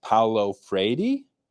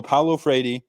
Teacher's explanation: the d is like a really really nice portuguese rolled r